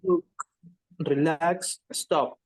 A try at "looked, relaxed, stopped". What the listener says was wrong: It's like T. The pronunciation is like T. You don't say look it. You don't say relax it. You say look. No, listen up. We don't say look it. No, we say look, relax, stop. It's like a T, okay?